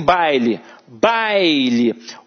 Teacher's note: couro e o u vai ser a semivogal aqui em baile baile o a é a vogal e o i é a semivogal